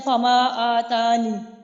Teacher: جیسے ہم نے یا کو حذف کیا تو باقی کلمہ رہ جاتا ہے فما آتانی. نی کو کھینچنا نہیں ہے آپ نے، نون کے نیچے صرف زیر رہ گئی ہے